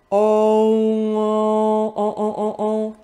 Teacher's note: c'est comme un O plus le son M, ça fait on, très nasal. Donc, le on vient du O.